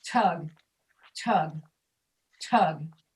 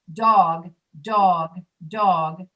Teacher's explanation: you can hear the air come out when you say tug. But if you say dog, if I say dog, dog, dog, the paper will not move.